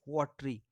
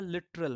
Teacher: ठीक ऐसा ही होता है लिटरल में, LITERAL, लिटरल में जो ए साउंड है second syllable, there are three syllables in both the words watery and literal, but we are not pronouncing the second syllable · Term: एलिजन